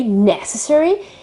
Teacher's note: the adjective necessary necessary the accent is on the first e